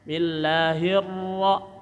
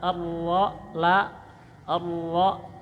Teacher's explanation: ra ditekan, tahan, hirra ada ra bertasdid, jadi lam ra itu satu letak.